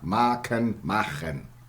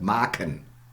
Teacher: Just the k fricative in German. Plosive in English.